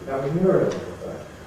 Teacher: the nucleus there will be on Muriel because we know you've been answering the phone, so the phone is not you.